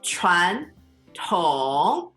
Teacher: So second tone, then the third tone